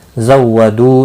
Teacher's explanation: दू वाव मद्दा है, एक अलिफ के बराबर खींच कर पढ़ेंगे